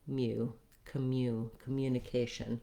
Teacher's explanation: So I would write that with a UH, ka, communication. This U is one of our letter U's that says more than just the U vowel. It also has the glide ya. So ka, mu, just like the word you, it has the glide and then the U.